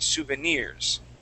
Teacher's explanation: our accent will go at the very very end